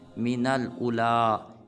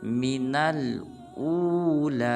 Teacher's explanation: بعض مسلمان پڑھ دیتے ہیں من الاولیٰ، یہ بالکل غلط ہے، حمزہ کے بعد واو ساکن ہے تو ہم پڑھیں گے من الاولا، یعنی کہ حمزہ کو ایک الف مقدار لمبا کریں گے